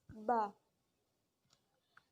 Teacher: ketika bibir merapat, udara tidak mungkin keluar, kemudian udara dilepaskan secara sekaligus dan udara bertiup keluar melalui bibir, menghasilkan suara yang eksplosif